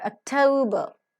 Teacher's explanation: Note that t is accented and t is aspirated here, whereas k is not.